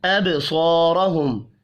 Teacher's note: یخطف، خا اور طا دونوں حروف مستعلیہ ہیں، پر پڑھے جائیں گے. ابصارہم، با ساکن پر قلقلہ کریں گے، صاد اور را کو پر پڑھیں گے